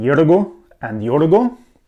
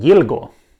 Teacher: We have the tip of the tongue bent backwards here in the middle of the words in yugo and yugo and we have the tip of the tongue forwards in yilgo.